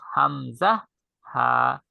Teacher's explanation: কণ্ঠনালীর শুরু থেকে উচ্চারিত হয় দুইটা হরফ, হামজা, হা।